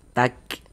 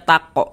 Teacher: Jadi dia ada nafas yang mengalir ketika kita mengucapkannya. Tapi alirannya itu seperti memercik saja kalau pada huruf kaf ini. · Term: sifat hamas